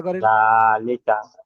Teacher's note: তারপরে এখানে ইজরা হবে, জালের উপরে খাড়া জাবার এসেছে, খাড়া জাবার হলো আলিফ মাদ্দার সমতুল্য, তাই একে এক আলিফ পরিমাণ টান দিয়ে পড়তে হবে।